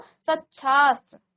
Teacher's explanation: त के बाद श तालव्य श आए तो त का च और श का छ हो जाता है